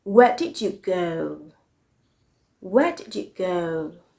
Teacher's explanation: the falling intonation pattern means that your voice starts a little bit high and ends low so it goes from high to low high to low the